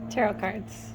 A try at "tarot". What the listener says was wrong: Tarot. Not Terra.